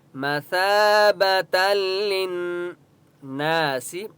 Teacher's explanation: لن نون کے اوپر تشدید ہے اس لیے یہاں پر غنہ ہوگا